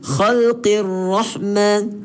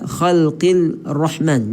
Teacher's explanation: Lam ni kita buang seolah-olah kita memang tak baca lam ni. Kita masuk terus ke ra. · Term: alif lam syamsiah